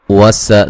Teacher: سین کو باریک سیٹی سے